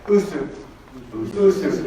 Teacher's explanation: So notice this little apostrophe right here. It's called a glottal stop. It's cutting that word off.